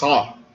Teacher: Sa é um S pronunciado com um pouco de fricção na garganta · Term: S gutural